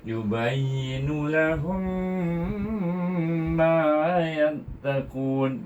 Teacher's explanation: mim ini bertemu dengan huruf mim yang tasydid itu, maka hendaklah dibaca dengan idgham syafawi ataupun idgham isra'il, saya dengan dengung dua harakat.